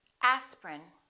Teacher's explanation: each one of these words contains one vowel one syllable which is not pronounced